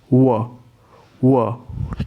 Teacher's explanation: ये दांत और ओष्ठ दोनों के सहयोग से होता है